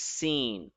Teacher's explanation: the upper and the lower teeth will have a little bit of gap, and it has a kind of a whistling sound in it.